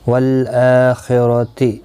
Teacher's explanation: حمزہ کے اوپر کھڑی زبر ہے، 1 الف کی مقدار کے برابر کھینچ کر پڑھیں گے